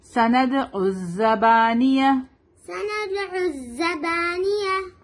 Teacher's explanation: سند دال پر قلقلہ ہوگا · عین کو زا سے ملائیں گے، الف لام پہ کوئی سائن نہیں ہے تو اس کو نہیں پڑھیں گے